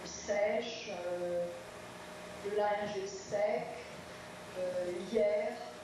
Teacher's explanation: Donc la personne qui pose la question ne saisit pas bien la différence avec le E ouvert qu'on transcrit avec la lettre grecque epsilon